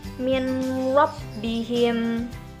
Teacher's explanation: Contoh lainnya yaitu min rabbihim. Jadi nun mati dan bertemu dengan huruf ro dibaca dengan tidak mendengung. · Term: idgham bilauna